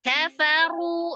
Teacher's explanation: Kafaru, runya mad tabi'i waw. Waw sukun sebelumnya dhamma di huruf ro, ro-nya dibaca tebal berharokat dhamma